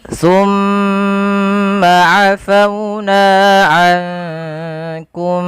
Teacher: ada bacaan gunnah pada lafal mim yang berharakat tasydid